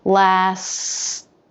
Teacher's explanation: for example my tongue presses against the roof of the mouth it's not actually the tip that moves but the front top of the tongue just behind the tip the tip stays in place this is for the s while